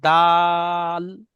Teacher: টান তিন আলিফ দিতে হবে, মাঝখানে টানতে হবে